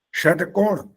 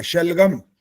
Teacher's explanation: गर्म हवा निकलेगी मुंह से, तब वो मूर्धन्य बनेगा, नहीं तो तालव्य हो गया। शलगम, इसमें हवा गर्म नहीं निकलेगी।